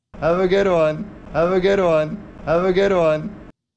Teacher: Do you hear how the words have and good receive the stress?